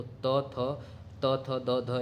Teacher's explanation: द ध ये सभी क्या है दंत होते हैं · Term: दंत ध्वनि